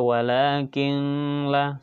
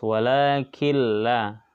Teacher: nah apabila nun sukun atau tanwin bertemu huruf lam atau rok maka dibaca melebur tanpa mendengung ingat ya dibaca melebur tanpa mendengung tidak boleh berdengungnya